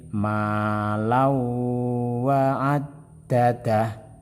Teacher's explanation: bertemu dengan yanmu dibaca tasbit dan mendengung jadi caranya membaca adalah tanwin dimasukkan kepada Wow kemudian didengungkan atau Wow dibaca tasdid dengan didengungkan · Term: Idgham Bighunnah